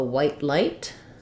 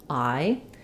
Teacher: it starts more open and then closes